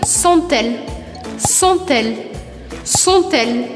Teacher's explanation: eu preciso pronunciar esse T, porque a próxima palavra começa com E